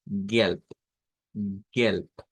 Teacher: No tenemos mayor cambio, solamente que la consonante última se convierte de una B a la pronunciación de una P.